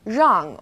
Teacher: it's quite similar to the r sound in run but the r a little softer so try moving your tongue more to the back of your mouth